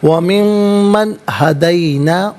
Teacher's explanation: یہاں پر یرملون کا قاعدہ اپلائی ہوگا، اسے ہم پڑھیں گے وَمِمَّن، نون ساکن کے بعد ہا، ہدینا میں ہا ہے، حرف حلقی ہے تو نون ساکن کو اظہار کے ساتھ پڑھیں گے، غنہ یا اخفا نہیں کیا جائے گا